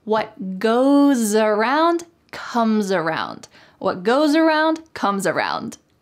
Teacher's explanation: say this phrase together with the S changing to a Z